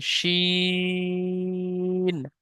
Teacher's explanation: আর শিনের আওয়াজটি হবে একটু মোটা আওয়াজে